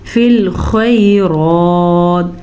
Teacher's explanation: خا کے مخرج پہ دھیان دیجیے گا اور را کو پر پڑھ لیجیے گا